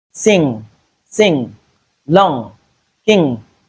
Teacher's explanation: the air will find it way out through the nose